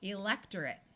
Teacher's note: Notice that the suffix ate takes on a muffled schwa sound of or I rather than a clear long A sound because suffixes are rarely accented in English words.